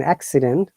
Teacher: First C is ka, but second C is sa.